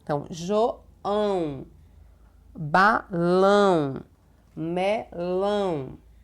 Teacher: ela dá um som nasal que é o som sai tanto pela boca quanto pelo nariz